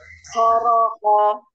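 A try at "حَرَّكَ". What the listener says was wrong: Tebalkan lagi ho-nya.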